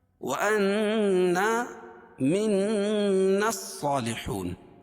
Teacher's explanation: نون مشدد میں غنہ ہوگا اور الف سے پہلے نون کے اوپر زبر ہے تو الف مدہ اس کو ایک الف کے برابر کھینچ کے پڑھیں گے